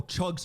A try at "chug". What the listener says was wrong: You go hard on the G at the end of chug. Chug.